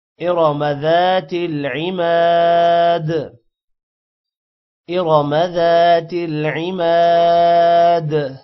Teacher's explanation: میم کے بعد الف ہے یہ بھی تھوڑا لمبا ہوگا اور دال پر قلقلہ ہوگا